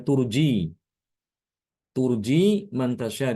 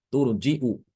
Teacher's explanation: untuk bacaan Ibnu Katsir dia ditambahkan Hamzah